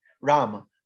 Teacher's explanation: the newer languages drop the a's and sanskrit doesn't